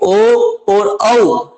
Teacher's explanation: ओ और औ का उच्चारण स्थान है वो कंठ और ओष्ठ से होता है, इसलिए इन्हें कंठोष्ठ वर्ण कहा जाता है।